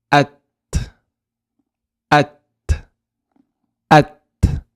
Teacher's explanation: At at So if you look at my mouth at at you can see here at I've said the a tip of my tongue goes on the upper pallet. T T I'm going to I'm going to go to from the A to the T.